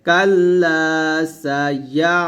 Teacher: তো কাল্লা, লাম আলিফ জবর লা, এখানে একটা টান দিতে হবে